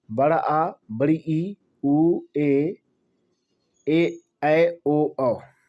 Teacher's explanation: इनके उच्चारण में ज्यादा समय लगता है। दोगना समय लगता है। किससे? एकमात्रिक स्वर से। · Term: दीर्घ स्वर